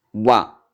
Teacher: यानी वा वर्ण ऐसा है जो एक सिंगल होते हुए, एक ही होते हुए दो वर्णों को स्पर्श करता है। दो उच्चारण स्थान इसके होते हैं, दंत भी होता है और ओष्ठ भी होता है। यानी हमारी जीवा दांतों पर भी स्पर्श करती है और ओंठों को भी छूता है, ओंठों को स्पर्श करता है। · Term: दंतोष्ठ